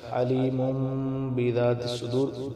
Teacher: اب تنوین کے بعد با آ گیا تو ہم نے اس کو کیا کیا ہے، ہلکی سی میم سے بدل دیا ہے، جیسے علیم۔